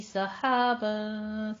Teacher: صحابن میں سین کی آواز سیٹی کے ساتھ آئے گی، اور ہا وسط حلق سے ادا کرنا ہے